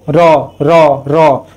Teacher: কাঁপছে, জিভটা আগায় সামনের দিকে এগিয়ে গিয়ে কম্পিত হচ্ছে, তাই রটা হয়ে গেল কম্পিত ধ্বনি।